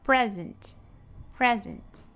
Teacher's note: Então, pres, que vai ser a sílaba mais forte, e a sílaba átona, ant, ant